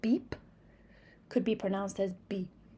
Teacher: when P is in the final position, it is not fully articulated.